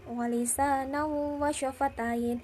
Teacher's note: Naunya itu dibaca idgham bi gunnah karena ada hukum sukun atau tanwin bertemu dengan wawu, dibaca masuk dan mendengung